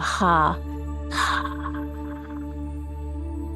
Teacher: And then take a deep breath in and we're going to make a ha sound, H-A, so it's more breathy. It's a little more vibrational quality in the throat, like you're fogging a mirror.